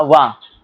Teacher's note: दंत होस्ट जिसमें दांत और होठ का दोनों का प्रयोग किया जाता है